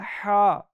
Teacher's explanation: एक हा वो है जिसकी आवाज आपने हलक के दरमियान से निकालनी है और एक हा वो है जिसकी आवाज आपने सिन से निकालनी